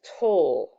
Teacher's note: make a typical vowel sound like the e isn't completely silent it actually makes this schwa sound which is schwa is a weak vowel